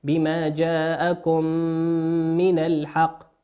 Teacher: الميم في كلمة جاءكم ميم ساكنة أتى بعد حرف الميم والميم من حروف الإضغام